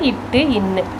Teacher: இவை நாவினது நுனி அன்னத்தினது நுனியை தொடுவதால் தோன்றுகிற எழுத்துக்கள்